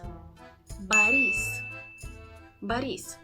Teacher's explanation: the stress goes on the E so on the second syllable not the first one